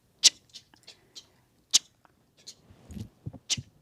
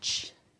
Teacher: we can have a glottalized C wedge, which means we are forcing that sound.